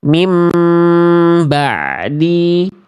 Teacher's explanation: Nun sukunnya sudah berubah jadi mim. Dan M-nya ditahan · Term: iqlab